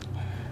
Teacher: Kita perhatikan berhentinya huruf ba itu pada dua bibir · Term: makhraj ba